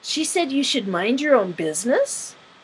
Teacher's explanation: repeating what was just said with a rising intonation, indicating that you heard and you want more information